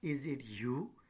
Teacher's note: Now if we take the example, is it you, so is it is a prehead and you is the tonic syllable